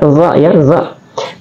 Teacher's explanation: Za adalah tarful lisan atau keluar di ujung lidah